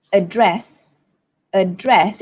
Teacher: in British English, it would be address, address. It sounds like, oh, I'm wearing a dress, but that's how it is. The stress falls on the second syllable, address. But in American English, we have two ways.